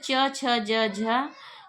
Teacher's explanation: च, छ, ज, झ यह स्पर्श संघर्षी व्यंजन कहलाते हैं